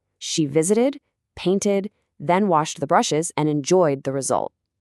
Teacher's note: Visited and painted both get that extra id syllable. Washed gets that unvoiced, sharp T sound. And enjoyed gets the voiced D sound.